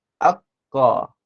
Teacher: kita akan rasa bahagian hujung kita punya lidah tu akan terangkat ke langit · Jadi Q jadi akhir lidah beserta di langit bahagian atas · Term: qaf